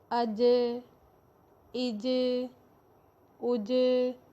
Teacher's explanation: جب بھی جیم ساکن ہوگا تو اس پر آواز پلٹ کر آئے گی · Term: صفت قلقلہ